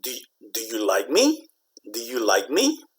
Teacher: When you ask yes no questions, it kind of goes up at the end.